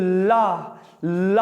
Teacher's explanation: जीभ तो ऊपर जाकर दरवाजा बंद कर लिया और हवा पास से निकल जाती है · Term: पार्श्विक व्यंजन